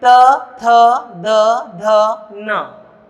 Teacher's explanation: त, थ, द, ध, न का उच्चारण करते समय हमारी जिह्वा हमारे ऊपर वाले दांतों को छूती है। त, थ, द, ध, न हमारे दांतों को, त, थ, द, ध, न इन 5 व्यंजनों का उच्चारण, त, थ, द, ध, न इन 5 व्यंजनों का उच्चारण करते समय जिह्वा हमारे दांतों को छूती है, अतः ये दंतव्य व्यंजन कहलाते हैं।